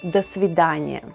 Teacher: The stress is on the second word, so letter O in the first word is pronounced as A.